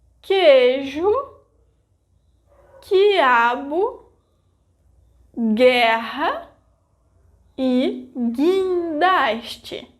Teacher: in those cases I didn't pronounce the vogal U